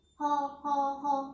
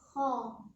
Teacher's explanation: Kalau kita tidak mengangkat lidah, berarti ho, tidak bulat, ya. Harus kho. Berkaitannya dengan lidah. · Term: tafkhim